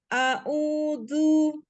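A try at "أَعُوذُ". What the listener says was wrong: Zu. Cuma dimonyongin pas domahnya. Ya, itu masih sebatas seperti ini. Tapi kalau tadi posisi monyong terus langsung mempertahankan monyongnya itu Umi susah dapat hurufnya.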